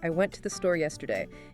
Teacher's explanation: That's the power of reduction. The I, to, and the are merely transient sounds that facilitate the connection between the booms. · the word yesterday, a four-syllable adverb, takes up roughly the same chunk of time as the preceding three-word phrase I went to the